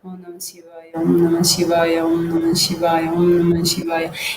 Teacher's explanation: So in the Vachika, the sound is produced externally, and in the Upamshu, without the sound, so only you can lips are movement. The movement of the lips are there, but it's not the external sound, but only internal, like murmuring.